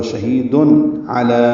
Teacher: شہید ہی یا مدہ ہے، تنوین کے بعد عین ہے اس لیے اظہار ہوگا شہید علی، عین وسط حلق سے ادا ہوگا، لام کو باریک پڑھیں گے، دو حرکات لمبا کریں گے، یا نہیں پڑھیں گے۔